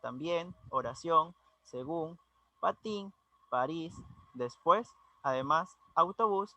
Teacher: recordando que llevan su acentuación en la última sílaba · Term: palabras agudas